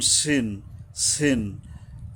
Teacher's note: এখানে সিনটা পাতলাভাবে নিচের দাঁতের মাড়ির আগার থেকে উচ্চারিত হবে। মাঝখানে যে দুইটা লম্বা দাঁত আছে, জিহ্বার আগাটা এসে এখানে মিশবে।